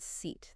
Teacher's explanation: that long e needs your tongue high and forward high and forward yeah and here's a trick think about smiling